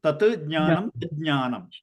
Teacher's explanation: This j comes about because because of the sandhi, the ta will change into da and that da will change into ja